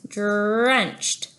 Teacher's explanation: for the D it comes right behind our two front teeth on the alveolar Ridge this spot here that bump behind your two front teeth so